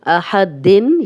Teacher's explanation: یہاں کلیئر تنوین کی آواز آ رہی ہے اور ہم غنہ نہیں کریں گے کیونکہ آگے ہا آ گیا ہے. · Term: اظہار حلقی